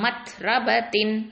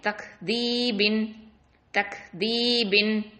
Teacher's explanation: தா சுகூனுக்கும் கேஃப் சுகூனுக்கும் நம்ம வந்து லைட்டா தெரிச்ச மாதிரி தான் ஓதணும்.